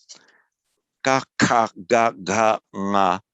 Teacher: the point of articulation where the tongue touches it's at the back